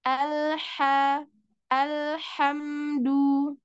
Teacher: ha tenggorokan bagian tengah